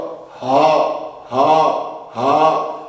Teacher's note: انتہائی حلق سے جس کو اقصائے حلق کہتے ہیں